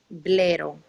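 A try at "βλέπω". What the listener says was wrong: No, es pi. Tú conoces a pi. Blepo. Estás confundiendo la pi con ro y la ro con pi, ¿ok?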